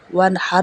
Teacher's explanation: واو زبر نون ون، ہا زبر را حر، ون حر۔ یہاں پہ اظہار ہوگا کیونکہ حروف حلقی میں سے ہا ہے